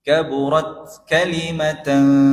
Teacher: huruf ta yang disukun itu sifatnya syiddah. Dia memberikan suara tertahan.